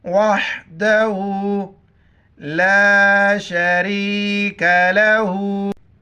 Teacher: छोटी काफ है, बारीक पढ़ेंगे